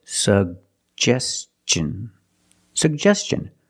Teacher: Put the stress on the second syllable.